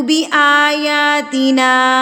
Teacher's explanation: نا کے اوپر الف کے اوپر مد ہے، اس کو ہم نے 4 حرکات کے برابر کھینچنا ہے